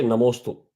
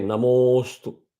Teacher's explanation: a filler akshara so you don't say namosto you say namaste you drag the mo with one more extra Matra and complete the meter